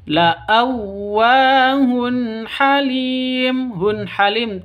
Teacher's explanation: jelas terang karena bacaan izhar halq ya tidak boleh dengung tidak boleh disentak